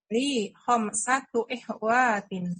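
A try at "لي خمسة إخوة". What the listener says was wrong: Nah, wa-nya tidak panjang. Iya, khamsatu ikhwatin.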